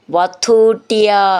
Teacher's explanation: ധു എന്നുള്ള അക്ഷരം നന്നായിട്ട് ഊന്നി പറയാനുള്ളതാണ്